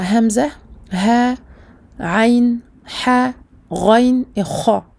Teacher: Nous voyons que les lettres pour lesquelles les voyelles sont colorées en marron sont les lettres halqiyya, les lettres dont le point de sortie est la gorge. Al-huruful halqiyya.